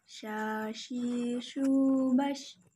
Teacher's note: Cara melafalkan huruf shin adalah menyentuhkan tengah lidah dengan langit-langit, mengalirkan udaranya dan nafasnya. Bahkan kita melafalkan menyebarnya nafas dan udaranya disebut tafasfi.